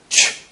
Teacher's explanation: with this manner of articulation we have a gradual release of air rather than the sudden release of air with the plosives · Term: affricates